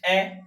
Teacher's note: तो ए में तो हमारे होठों का आकार गोल नहीं हो रहा है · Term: अवृत्ताकार